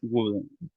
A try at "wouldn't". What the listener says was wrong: La L no se pronuncia.